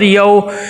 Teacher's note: اِلَّا رَبَّهُمْ بِهِمْ يَوْمَئِذٍ، یا واو زبر یو، واو لین ہے، نرمی سے ادا کریں گے، مجہول نہیں پڑھنا، یا کو واو کی طرف جھکائیں گے، واو پہ ہونٹ گول کریں گے، معروف ادا ہو جائے گا۔